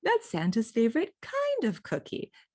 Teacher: That low tone is signaling to my listener without either of us being consciously aware of it, the thing that was already established that we're already both talking about.